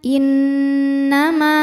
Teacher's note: jika berhenti di ma hukumnya adalah madii karena ada Alif didahului harakat fathah maka mimnya panjang dua harakat